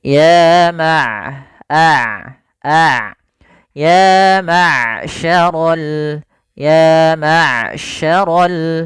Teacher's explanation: sifat bainiahnya di antara sifat syiddah dan sifat rakhawah suaranya tidak terlalu ditahan dan tidak pula dialirkan dengan lepas tapi tengah tengah